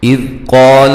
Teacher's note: ذال کو نرم ادا کرنا ہے، ہلانا نہیں ہے